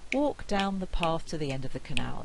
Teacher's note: when I say walk it takes quite a long time to say that but by the time I get to end of the cut I'm saying that rather quickly